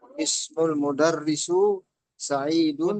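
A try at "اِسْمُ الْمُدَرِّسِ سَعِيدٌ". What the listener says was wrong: Mudarrisi, Pak. Kasroh. Mudarrisi.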